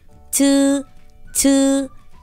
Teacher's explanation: Chữ C bật hơi mạnh hơn